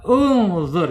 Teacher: Karena ain [berdehem] ain fi'ilnya ya ain fi'il yang nomor dua nomor 3 ya ini harakatnya domah sehingga alif wasalnya harus dibaca u juga